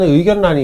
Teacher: 니은하고 리을이 만났을 때 이 리을이 니은으로 바뀌는 경우가 있습니다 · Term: 비음화 4번